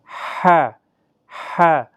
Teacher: ح حروف حلقی کا حرف ہے، وسط حلق سے ادا ہوتا ہے